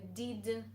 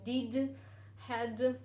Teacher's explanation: So I replaced the voiced consonant with a voiceless, like it's done in Russian.